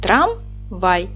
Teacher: наголос падає на другий склад Т - твердий приголосний р - твердий приголосний а голосний м